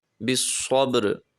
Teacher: یہاں پہ وقف ہے تو جب ہم وقف کریں گے تو را کو ساکن کر دیں گے